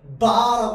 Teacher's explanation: 바라고 하니까 공기가 나오다가 입술 때문에 막혀요. 바라고, 맞지? 바, 마, 자, 차 전부 막힙니다. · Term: 자음